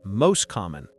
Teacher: the T sound in most often disappears, so it sounds like most common. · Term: elision